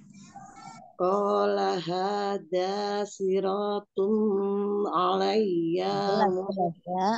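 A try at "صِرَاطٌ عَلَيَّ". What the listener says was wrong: Afwan, siratun tidak ditahan. Tanwin bertemu ain, izhar, izhar hakiki ya, jelas ya. Qala hadza siratun alayya mustaqim.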